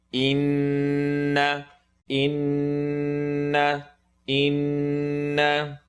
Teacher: Noon shadda, full nasal sound. Anytime there's a W on top of the noon, we make a full nasal sound.